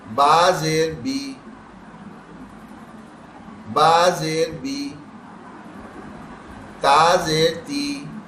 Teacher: بڑی یہ کی آواز کے بجائے چھوٹی یا کی آواز نکالیں گے